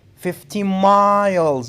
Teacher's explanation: You have to put the stress on miles.